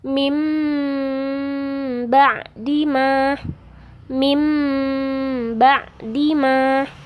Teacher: dengan huruf ba jadi cara membacanya tanwin berubah suara menjadi Meme dengan merapatkan dua bibir serta mendengung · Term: iqlab